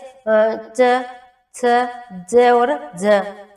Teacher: यानी कि हम जब इनका उच्चारण करते हैं ना, जैसे च, छ, ज और ज, वैसे तो ये तालव्य है, लेकिन जब हम इनका उच्चारण करते हैं तो थोड़ी सी ऊष्मा पैदा होती है, थोड़ा सी रगड़ लगती है जीवा को, इसलिए इनको स्पर्श संघर्षी व्यंजन कहकर पुकारा गया है।